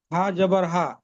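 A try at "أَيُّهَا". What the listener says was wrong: না, এই লামটা এর সাথে মিলাতে হবে, হা লাম জবর হাল,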